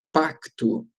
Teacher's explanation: eu tenho um encontro consonantal, duas consoantes e as duas são pronunciadas